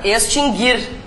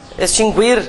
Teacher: esses dois verbos nunca tiveram trema porque o u nunca foi pronunciado